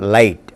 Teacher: Old English velar fricatives, voiceless and voiced, are dropped, or they are no longer used in modern English.